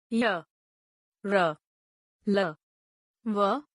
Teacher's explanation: इन व्यंजनों के उच्चारण के समय जीभ मुख के किसी भी भाग को पूरी तरह स्पर्श नहीं करती। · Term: अंतःस्थ व्यंजन